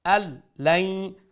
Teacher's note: after nun sakin is a letter lam, so we'll do idgham, we'll incorporate the nun sound into the lam, so from an lam it will become al lam, and there is no ghunna